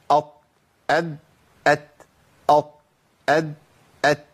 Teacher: الطاء والدال والتاء بيخرجوا منين؟ من مخرج واحد. ايه هو؟ طرف اللسان مع اصول الثنايا العليا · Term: مخرج طرف اللسان